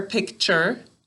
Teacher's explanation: in that last syllable i hear an er don't you think you hear an er picture but to spell